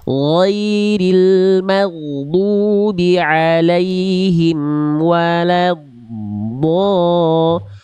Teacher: Pergeseran penyimpangan pergeseran atau memanjang makhraj dari asalnya pinggir lidah belakang yang nempel, dia diseret ke arah depan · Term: istitolah